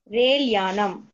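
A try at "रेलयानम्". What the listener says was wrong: Re-la. You're reading. Then when you read the whole word, you say Railyanam. It is Relayanam. Relayanam. La, it is la, not lakara.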